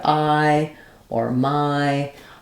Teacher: that's a long gliding I sound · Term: I diphthong